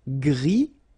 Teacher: Gris, don't pronounce the S